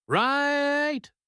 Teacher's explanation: He dragged the word out, and his voice dropped down very low. "Right." To Sam, this sounded aggressive. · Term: long, low right